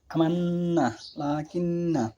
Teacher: 17 নম্বর হচ্ছে নুনে মুশাদাত বা তাজদীদযুক্ত নুন এর মাখরাজ হলো নাকের বাসি বা খাইশুম। নুন তাজদীদযুক্ত হলে গুন্না বা নাকিসুর উচ্চারিত হয়।